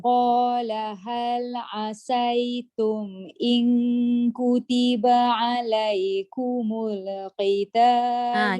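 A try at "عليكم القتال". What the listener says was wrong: Jaga lam. Jangan kumula. Pastikan dia tak hidup balik. Kumul qita. Gitu.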